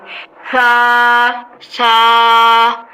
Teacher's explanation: سا ادا کرتے ہوئے سیٹی کی آواز نہیں آنی چاہیے